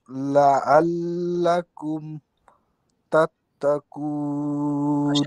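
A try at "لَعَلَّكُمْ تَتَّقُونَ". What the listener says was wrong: আইন উচ্চারণ কিন্তু হয় নাই। আইন উচ্চারণ গাঢ় না।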